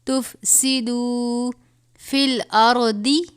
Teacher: دال واو پیش دو ہے، اس کو تھوڑا سا کھینچ کے لمبا کریں گے